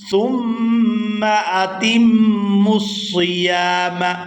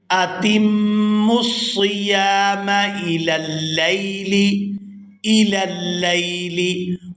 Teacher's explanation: یہاں میم مشدد پر غنہ کریں گے